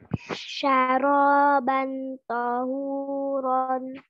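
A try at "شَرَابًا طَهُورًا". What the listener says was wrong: Ikfa-nya diperjelas. Syaraban tahuron.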